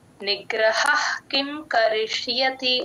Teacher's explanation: విసర్గ H sound అండి విసర్గ సగమే పలుకుతాము క ముందు వచ్చే విసర్గమే సగమే పలుకుతాము నిగ్రహ్ కిం కరిష్యతి ఆ ష